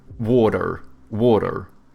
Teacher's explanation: You know how Americans, they have like soft T's and then they pronounce their R's